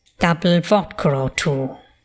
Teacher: we have intrusive r in the phrase double vodka or two